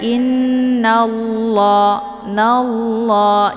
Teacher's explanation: Cara bacanya innallah, nallah, jadi ditebalkan, bukan nalla ya, tapi nallah ditebalkan. Kemudian la dibaca panjang. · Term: lafadz jalalah